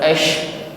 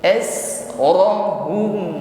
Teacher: huruf sin sukun ya, hamas safir ya, desis di ujung lidah tipis ya, bukan ash.